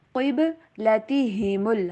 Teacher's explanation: قاف کا اوپر پڑھیں گے اور با کے اوپر کلکلا